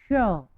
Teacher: इसको बोलते समय हमारी जिह्वा मूर्धा से स्पर्श करती है, श। ठीक है, ये श है, ये मूर्धन्य है, श।